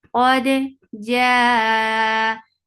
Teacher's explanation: make it 4 counts long because this is muttasil wajib.